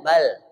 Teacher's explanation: lam itu kan lidahnya ke atas yang ujung lidah bal ke atas ditahan bal kalau tidak ke atas langsung turun lagi itu belum sakta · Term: saktah